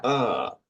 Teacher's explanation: es como decir la a pero con la boca Un poquito más entrecerrada y con la lengua un poco retrocedido a la parte o